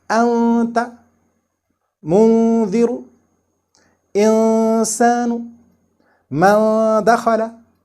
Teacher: this noon sakin is pronounced through nose only without touching the makhraj of noon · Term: hidden noon